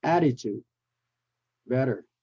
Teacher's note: and then we flap the T into a d